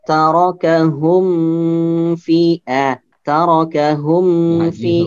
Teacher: Mim sukun bertemu dengan selain huruf mim dan ba, maka dibacanya jelas dan tidak ditahan sama sekali ya. Tidak ditahan. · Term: izhar syafawi